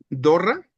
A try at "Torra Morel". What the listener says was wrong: Con T.